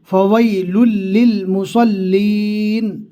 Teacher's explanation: لام کو لام کے ساتھ میں ملانا ہے، پھر تشدید والے لام کو جزم والے لام کے ساتھ میں ملانا ہے۔